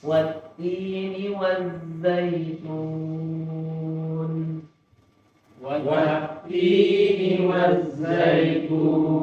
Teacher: Beda dengan zai, waz tetap mengalir ini. Tetap mengalir. Yang dialirkan adalah suara ini.